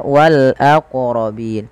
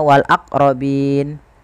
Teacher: Qalqalah yaitu bacaan memantul, sehingga dalam melafalkan wal aqrabin ini wajib memantulkan